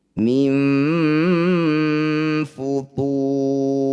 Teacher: Cara bacanya tu panjangkan 6 harokat, huruf terakhir sukunkan. Mim futurin, ketika dibaca berhenti. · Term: mad alif disukun